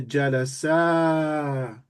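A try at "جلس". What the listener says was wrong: You have to make it longer.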